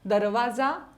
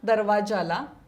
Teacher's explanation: तालव्य उच्चार बदलून दंत तालव्य होतो